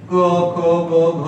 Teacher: क म्हणताना हा जो कंठ आहे तो थोडा उचलावा लागतो.